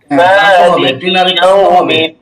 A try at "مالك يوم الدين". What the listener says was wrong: শেষে টান দিতে হবে।